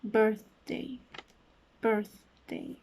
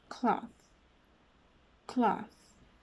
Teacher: this is a voiceless sound since there is only air passing through when making this sound so its place of articulation would be an interdental sound since